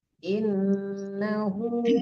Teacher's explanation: innahu panjangkan hunya dua harakat